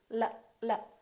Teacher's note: it's going up and down right behind your upper teeth